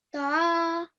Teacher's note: this is a vertical fatha, so you're supposed to prolong the sound for 2 seconds